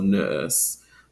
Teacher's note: Eastern Standard American English, that non-rhotic pronunciation is preferred, so nurse. However, the sound, so nurse, is allowed in this particular lexical set.